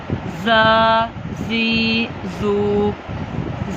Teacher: ज़ा में सीटी की आवाज़ है।